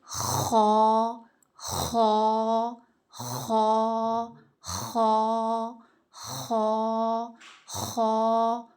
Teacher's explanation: حلق کا وہ حصہ جو منہ سے قریب تر ہے، یعنی کہ ادنائے حلق، وہاں سے خا ادا ہوتا ہے